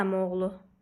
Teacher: saitlərdən biri düşür, digər də uzun tələffüz olunmadan